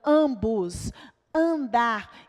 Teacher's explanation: Então, nós temos aqui, por exemplo, na palavra ambos, nós não temos o som do M. O M está aqui só para tornar o A nasal. Então, essa vogal ela vai ser nasalizada. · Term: vogal nasal